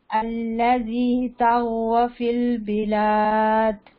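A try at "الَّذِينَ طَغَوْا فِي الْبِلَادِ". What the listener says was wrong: الذین بھی ہے نا، اچھا غو کیا ہے آپ بتا سکتے ہیں؟ غو کیا ہے، کون سا اس کے اندر رول ہے؟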